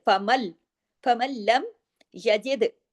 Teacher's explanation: یجد میں دال پہ کلکلا ہوگا